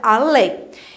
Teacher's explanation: Porque a sílaba tônica dela é a última. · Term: oxítona